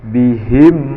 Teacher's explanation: FA disebut dengan Izhar Syafawi tidak boleh didengungkan atau disamarkan melainkan harus dibaca jelas makhraj sempurna Yaitu kedua Buah Bibir tertutup rapat tanpa disertai dengan dengung